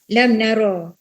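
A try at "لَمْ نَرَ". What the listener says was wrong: macam baca lam naro macam panjang pula. Lam naro tu. Dia kalau macam terbaca panjang sikit pun akan jadi lari. Contoh kalau kita baca alam tarokai kan kita baca alam taro kaifa.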